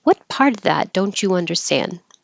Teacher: since it's not a yes no question it starts with a question word what it will start high and come down